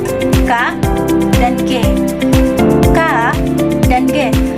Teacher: pangkal lidah menyentuh pada langit-langit lunak lunak atau kita bisa sebut dengan pelar K dan G. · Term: velar